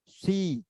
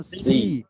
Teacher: সি সিনের উচ্চারণ সি বরাবর সি হবে, আর সদের উচ্চারণ আগে মুখ গোল করে নিতে হবে